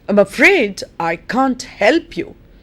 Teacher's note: the nucleus the most important part of the sentence is help